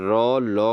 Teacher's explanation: रो लो का जो उच्चारण स्थान है दोस्तों वह है दंत मूल